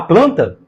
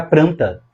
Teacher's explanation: o falante tende a escorregar e pronunciar um R no lugar do L